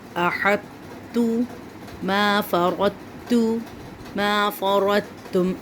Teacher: بس اب یہاں پہ تا اور دونوں کو ادا کیا جاتا ہے، کیونکہ یہاں پہ پہلے ہم تو کو موٹا کریں گے پھر تا کو باریک کر کے ادا کریں گے، اس کو کہتے ہیں ادغام ناقص۔